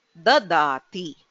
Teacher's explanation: any vowel in the abhyasa is shortened, so you will never hear a long vowel in the abhyasa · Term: hrasvaha